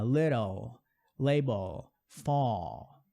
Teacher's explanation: Então o L, o som tem o som de L, não tem o som de U